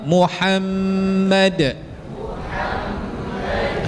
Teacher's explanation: Ha, kan dekat kalimah mim ha mim dal tu ada sab sabdu. Bila mim bersabdu hukumnya wajibul ghunnah. Kita dengung.